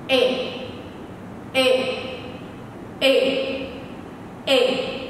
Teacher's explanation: chúng ta sẽ phát ra âm Y có độ dài ngắn và đẩy lực thật mạnh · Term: âm Y ngắn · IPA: /ɪ/